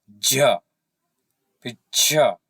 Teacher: अब इसमें कितनी अधिक हवा निकल रही, जोर भी लगाना पड़ रहा है। तो आपको स्पष्ट है, आप खुद इसको उच्चारण करके देख सकते हैं कि इसमें कितनी हवा लग रही है, इसलिए इन्हें महाप्राण कहा गया है।